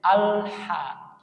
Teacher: Ketika lam sukun lidah masih nempel dulu. Setelah huruf berikutnya baru turun.